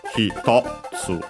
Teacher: accented as hitotsu on the to, so low, high, low.